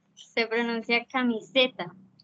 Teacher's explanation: se pronuncia camiseta, haciendo énfasis en la sílaba SE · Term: sílaba tónica